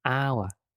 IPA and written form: aʊə (hour)